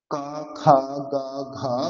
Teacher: ক, খ, গ, ঘ চারটে হচ্ছে শুধুমাত্র কন্ঠ। উচ্চারণ হবে শুধুমাত্র কন্ঠ থেকে।